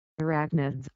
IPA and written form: əˈræknɪdz (Arachnids)